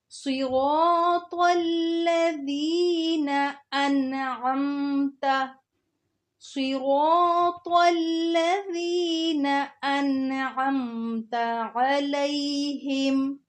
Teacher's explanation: صاد کو بھی موٹا کر کے پڑھنا ہے، طا کو بھی موٹا کر کے پڑھنا ہے، آگے ذال کو نرمی سے پڑھنا ہے۔